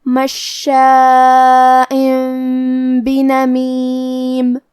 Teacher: تو ہم یہ تنوین کو میم میں بدل کے اور غنہ کے ساتھ یہ حکم کو ادا کریں گے